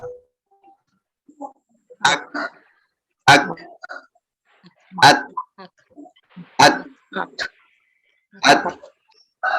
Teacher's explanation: Kaf sama ta ini istimewa. Dia suaranya berhenti tapi mesti ngalirin udara.